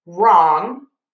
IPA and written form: rɔŋ (wrong)